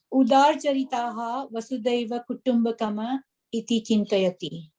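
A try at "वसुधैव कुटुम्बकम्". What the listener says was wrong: Kutumbakam atra halanta asti.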